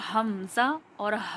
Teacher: हलक के सबसे नीचे वाला हिस्सा जो सीने की तरफ हमारे होता है, तो वहाँ से हमारा हमज़ा और हा अदा होता है, ये दोनों लेटर अदा होते हैं।